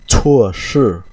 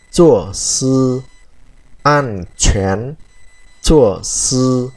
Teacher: chữ chua là chúng ta đọc hơi bật hơi nhé, chứ không phải đọc như chữ chờ bình thường của mình